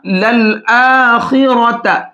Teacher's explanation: خا اور را دونوں کو موٹا کر کے پڑھیں گے۔